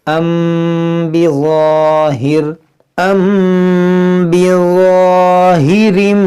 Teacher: میم ساکن کے بعد حرف با ہے، تو یہاں پر کیا ہوگا؟ اخفاء شفوی، یعنی یہاں پر ہم غنہ کریں گے